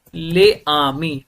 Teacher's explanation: अगर पहला word consonant से खत्म हो रहा है और दूसरा वर्ड वॉवेल से स्टार्ट हो रहा है, तो पहले वर्ड का कॉन्सोनेंट प्रोनाउंस होगा दूसरे वर्ड के वॉवेल के साथ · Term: लियाजो